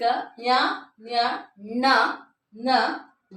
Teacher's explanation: ನಾಸಿಕ ಅಂತಂದ್ರೆ ಮೂಗು ಮೂಗಿನ ಸಹಾಯದಿಂದ ಉಚ್ಚರಿಸಲ್ಪಡುವಂತಹ ಅಕ್ಷರಗಳನ್ನ ನಾವು ಅನುನಾಸಿಕ ಅಂತ ಹೇಳ್ತಿವಿ